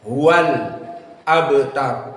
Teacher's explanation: di sini abtar ba sakinah, maka dia qalqalah as-sughra. Al-abtar, maka muraqqaqah ba-nya dan qalqalah as-sughra.